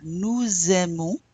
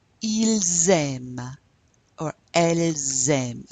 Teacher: there's a liaison because the S links to that first vowel.